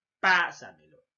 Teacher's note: Es una palabra sobresdrújula, ¿por qué? Porque lleva la mayor fuerza de voz en la tras antepenúltima sílaba o post antepenúltima sílaba.